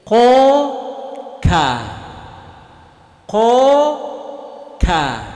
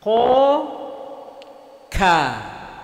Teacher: pangkal lidah dengan langit-langit yang lurus di atasnya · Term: huruf Kaf